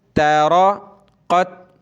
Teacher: را اور قاف کو موٹا کریں گے، قاف کو تا کے ساتھ ملائیں گے